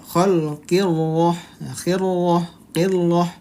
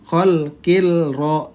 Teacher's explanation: Nah, qilra, nah bukan, karena ini alif lam syamsiyah, ra-nya bertasydid jadi diidghamkan, dimasukkan ke huruf ra.